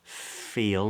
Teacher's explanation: lip touching the upper teeth how you f f feel and the f is voiceless there's no vibration feel feel let we get the long vowel e Fe feel